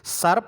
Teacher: सर्प में जो से है वो दांतों से बोला जाता है, तो उसको दंते से कह देंगे।